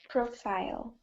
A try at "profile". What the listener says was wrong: Not profile. Profile. If you say profile, you're saying it as an action. Like profile, there's like profile. Actually, no, it's not. Even as a verb, it's the same. No, it's always profile on the first syllable.